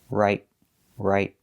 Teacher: With the word right, we don't release the T, we make a stop T.